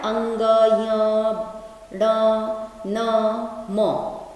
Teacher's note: सब में जो लास्ट वर्ण है वो नाक से आवाज निकालता है, तो इन वर्णों को हम लोग का उच्चारण स्थान कहते हैं नासिका। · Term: नासिक्य